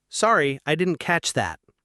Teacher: We say didn't catch. The two t sounds often blend together.